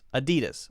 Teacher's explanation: Now notice that we're not saying the clear A sound. This is what's called a schwa. We're not saying Adidas.